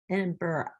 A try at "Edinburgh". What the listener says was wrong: Think more like, no, not borough. It's like bra almost at the end, like Edinburgh.